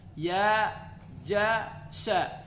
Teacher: tengah lisan atau wastal lisan bertemu dengan langit-langit bagian atas. Di sini keluar 3 huruf.